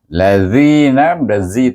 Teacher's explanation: huruf lam bunyinya Nal kemudian baru kita sebut la kemudian zina lazinazi tu dibaca dengan mad asli sebab sebelum ya ada baris bawah